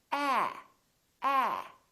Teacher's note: your lips are open and your tongue is down and your tongue is tense